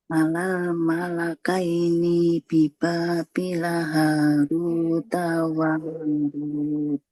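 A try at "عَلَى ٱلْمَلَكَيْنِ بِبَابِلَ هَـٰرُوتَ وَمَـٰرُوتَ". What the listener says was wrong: Taknya nggak panjang. Alal malakaini nunnya juga nggak panjang. Alal malakaini bibabil Harut wa Marut.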